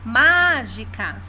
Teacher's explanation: Ma é a sílaba tônica. E é a antepenúltima. Então, é uma proparoxítona.